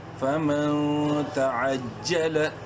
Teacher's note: نون ساکن کے بعد تا حروف حلقی میں سے نہیں ہے، اخفا کریں گے